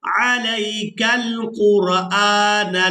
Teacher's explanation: अब जो पहला काफ आप देख रहे हैं इसको हमने बारीक अदा करना है और दूसरा काफ जो दो नुक्तों वाला है इसको हम पूरा अदा करेंगे।